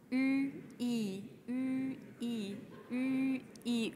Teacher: Ein Ü ist nichts anderes als ein I, aber mit runden Lippen.